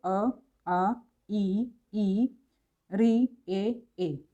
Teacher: तो इनमें होठ जो है वृत्ताकार नहीं रहते हैं, इसलिए इनको अवृत्ताकार कहते हैं।